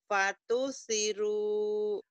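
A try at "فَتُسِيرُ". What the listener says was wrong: Si-nya panjang.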